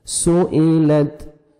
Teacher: تا کا ہلکا سا ساؤنڈ آئے گا، نہ آپ نے قلقلہ کرنا ہے اور نہ آپ نے موٹا کر کے پڑھنا ہے کہ طا میں آپ کا تا چلا جائے۔